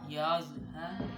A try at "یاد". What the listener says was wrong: زوا پہ سیٹی نہ یو یو